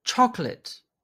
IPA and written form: ˈtʃɒklət (CHOCOLATE)